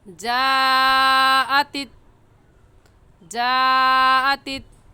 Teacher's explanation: इस मद को 4 अलिफ के बराबर खींच कर पढ़ेंगे, ना इससे कम और ना ही इससे ज़्यादा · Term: मद्दे वाजिब